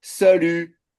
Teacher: Avec, vous voyez donc deux petites syllabes, salut, deux syllabes. Et la deuxième, allongée, pour marquer le fait qu'en français, bah, la dernière syllabe est plus longue.